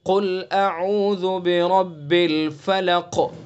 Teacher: حروف مستعلیہ میں سے جو ہر حال میں پر ہوتے ہیں. تو قاف کو ہم پر کر کے منہ بھر کے پڑھیں گے، اور اس کے بعد حمزہ اور عین کے اندر فرق پیدا کریں گے. · را کو پر پڑھیں گے. کیوں؟ اس لیے کہ را کے اوپر زبر ہے، اس لیے را کو پر پڑھیں گے.